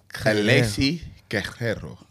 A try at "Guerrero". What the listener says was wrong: Guerrero. You got to roll the R. It sounds like your scooter malfunction. Guerrero.